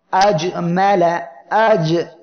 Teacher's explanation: আর একটা উদাহরণ আজ, মেলা, আজ। এই জিম অক্ষরটি জিহ্বার মধ্যখান তার বরাবর উপরে তালুর সঙ্গে লাগিয়ে উচ্চারণের সময় ধীর গতিতে আর জমিয়ে উচ্চারিত হবে। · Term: ইসমাত